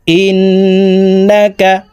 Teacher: এই হামজা তাসদিদ ওয়ালা নুনের সাথে নাকের বাঁশি থেকে তিন সেকেন্ড পরিমাণ গুন্না করে ধরে রেখে পড়বো